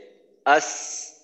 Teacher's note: অর্থাৎ মাখরাজে যাওয়ার সাথে সাথে আওয়াজটা যেন বন্ধ না হয়, মাখরাজে গিয়েও যেন আওয়াজটা একটু সময় চালু থাকে।